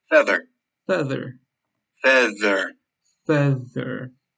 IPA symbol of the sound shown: ð